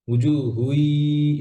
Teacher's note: তানবিনের পরে ইয়া, ইদগাম, ইদগাম কামেল, হ্যাঁ, পরিপূর্ণ গুণা হবে। উজুহুই, এভাবে।